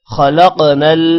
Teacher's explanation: خا موٹا ہوگا، قاف موٹا ہوگا، قاف کے اوپر قلقلہ ہے